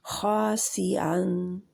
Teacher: मोटे हर्फ के आगे अलिफ जो होता है वो भी मोटा हो जाता है